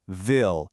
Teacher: Vil uses your top teeth lightly resting on your bottom lip. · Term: soft v